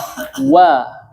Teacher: Ketika melafazkan huruf waw dia harus sempurna makhrajnya dengan apa? Membulatkan dan memonyongkan kedua bibir, ya.